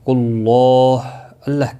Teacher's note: اللہ کا لام پیش کی وجہ سے پر پڑھا جائے گا، اس کے اوپر کھڑی زبر بھی ہے، ایک الف کے برابر کھینچ پڑھیں گے، ہا ساکن پڑھا جائے گا وقف کی صورت میں۔